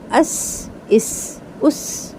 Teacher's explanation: सीन में बारीक सी टी · سین میں باریک سی ٹی